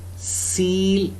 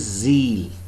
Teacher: the distinctive feature, voice, distinguishes S from Z. Remember, these two are contrasting phonemes.